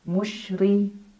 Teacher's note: ra dibaca secara tarqiq karena ra berbaris kasrah, jadi pangkal lidah kita datar.